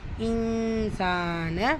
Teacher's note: சீன்ல அலிஃப் சகீரா இருக்கு இரண்டு ஹரக்கத் அளவு நீட்டம் கொடுத்து ஓதணும்